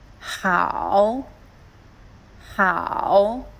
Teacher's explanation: At the third tone, down and up.